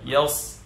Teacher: Yang terangkat adalah pangkal lidah sehingga dia tebal. Ya. Kemudian ya-nya dia tidak tebal. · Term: isti'la